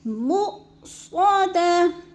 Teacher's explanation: مؤ پہ حمزہ ساکن ہے، اس کو جھٹکا دے کے پڑھیں گے